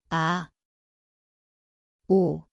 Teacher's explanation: Miesto je hrdlo, tichý začiatok.